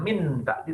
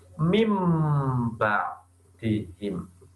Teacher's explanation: Cara membacanya bukan min bakti, tapi langsung mim baktihim. Nah, makanya mengganti suara nun menjadi mim. Jadinya terbuka, jadi tertutup mim. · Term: iklab